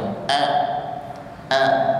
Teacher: diawali dengan huruf hamzah sifatnya syidah ya menekan sempurna hurufnya